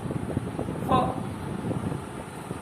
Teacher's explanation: लेबियोडेंटल में नीचे का होंठ ऊपर के दांतों को टच होता है